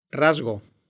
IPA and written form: ˈrazɣo (rasgo)